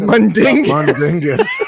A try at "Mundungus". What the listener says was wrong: Yeah, there's no I in there.